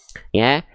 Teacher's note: Huruf ya keluar dari tengah lidah. Dalam istilah tajwid namanya wastul lisan.